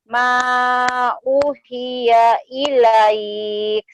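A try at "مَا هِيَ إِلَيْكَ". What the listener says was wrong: U-nya panjang, coba Teh. Ma uhiya ilaik.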